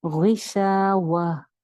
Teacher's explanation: گول تا اس کے اوپر جب ہم نے وقف کرنا ہے تو اس کو سائلنٹ ہا میں چینج کر دینا ہے